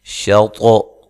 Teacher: یہ طا موٹے حروف میں سے بھی ہے اور حروف قلقلہ میں سے بھی ہے، تو اس پہ قلقلہ بھی کرنا ہے، موٹا بھی کرنا ہے اس کو۔ شَطْرَ، غل، را کو بھی موٹا کرنا ہے۔